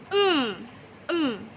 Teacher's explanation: Jika saya menyebutkan suara mem dan saya mencubit hidung saya dan lihat apa yang terjadi Iya suaranya berhenti dan udara tidak mengalir dari hidung saya maka tidak ada suara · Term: nasal